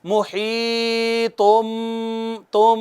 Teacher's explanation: یہ اخفاء ہو رہا ہے میم ساکن کا آگے با کی وجہ سے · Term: اخفاء شفوی